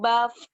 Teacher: Gigi seri atas, kita fokus ya, mainnya itu gigi seri atas sama bibir bawah.